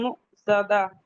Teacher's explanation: حمزہ پہ سکون ہے، جھٹکے سے پڑھیں گے، بولتا ہائے سکینہ بن جائے گی.